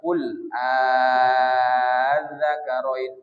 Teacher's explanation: Ibdal. Ya, hamzah kedua diganti menjadi alif mad